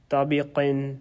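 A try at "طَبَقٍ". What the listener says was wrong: Taba. Spell it. Since you said tabi, it's not B, it's ba.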